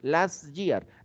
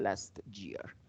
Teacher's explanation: como nosotros hablamos español No es tan fácil poner doble sonido de consonante como la s y la t entonces como que nos quedamos en la s nada más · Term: la t del final